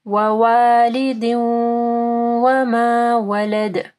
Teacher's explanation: ذا کے مخرج کا خیال رکھنا ہے، دال کے اوپر قلقلہ کرنا ہے۔ ووالد وما ولد۔